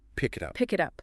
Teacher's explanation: The K sound slides right into the I. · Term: connected speech